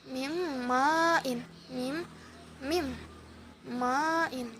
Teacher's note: berdengung pada saat kita menyebutkan huruf nun yang melebur ke mim dengan berunnah. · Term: idgham bi gunnah